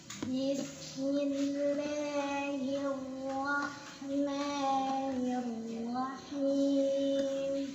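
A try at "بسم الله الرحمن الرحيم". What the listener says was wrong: Nah, itu coba saya betul atau tidak dibantu sama mulut ketika pengucapan ra. Banyak yang seperti itu. Hirwa, harusnya hirwa. Jadi mulutnya nggak usah ikutan. Hirwa, jangan hirwa, wa. Banyak yang dibantu dengan bibir. Hirwah, salah.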